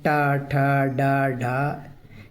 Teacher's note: ट वर्ग के जो वर्ण होते हैं ट, ठ, ड, ढ। ठीक है? तो ये आपके मूर्धन में आते हैं